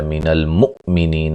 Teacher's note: حمزہ کو جھٹکے سے ادا کریں گے